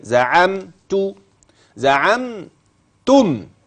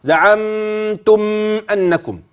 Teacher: زعم اول ميم معي ساكنه تلاها تا فذاك اظهار شفهي في كلمه واحده